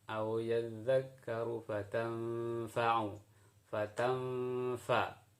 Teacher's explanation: suara nunnya dihilangkan, nun mati maksudnya, kemudian dipersiapkan untuk suara fa. Itulah yang disebut dengan ikhfa.